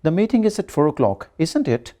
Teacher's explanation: If the tag is a real question, that is, if we really want to know something and are not sure of the answer, we use a rising tone. The voice goes up. · you can see my voice is going up